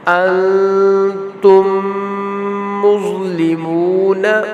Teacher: جیسے انتم مظلمون، انتم، ان پہ اخفا ہوگا، نون ساکن کے بعد تا ہے تو آگے میم ساکن ہے، میم ساکن کے بعد دوسری میم ہے تو یہاں پھر ادغام شفوی کریں گے، ادغام شفوی ہوگا، غنہ ہوگا